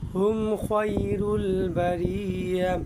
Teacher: মিম সাকিনের পরে যদি খা হরফ আসে তাহলে সেই মিম সাকিনকে গুন্না করবেন না। কেননা মিম সাকিনের পরে মিম আসলে এবং বা আসলে গুন্না হয়, কিন্তু খা আসলে কখনোই গুন্না হয় না।